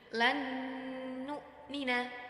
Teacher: di situ terdapat nun sukun bertemu dengan Nun jadi harus mendengung